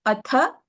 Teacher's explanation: tha is mahapranah